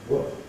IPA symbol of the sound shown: wə